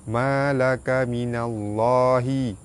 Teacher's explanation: Pada atas bertemu lam jalalah dibaca tebal.